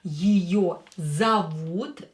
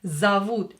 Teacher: O, not stressed, will be pronounced as A